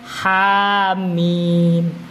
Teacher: Ha ini harus dibaca 2 harakat. Mim ini dibaca 6 harakat.